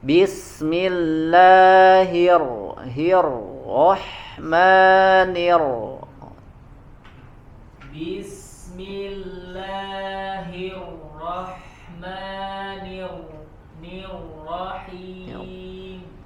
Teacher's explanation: Naikkan pangkal lidahnya ketika huruf ro tebal.